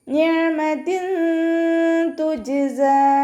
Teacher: താക്ക് കെസ്ര തെൻവീൻ വന്നു, തെൻവീനിന് ശേഷം ഇഖ്ഫാൻ്റെ അക്ഷരമായിട്ടുള്ള ത വന്നു, അപ്പോൾ നമ്മൾ തെൻവീനുള്ള നൂനിനെ മറച്ചു വെച്ചിട്ട് മണിച്ചോതി കൊടുക്കുക.